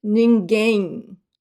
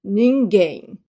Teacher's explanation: Ninguém. I do not close my lips when the M is the final, it's the last letter of the word. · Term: final M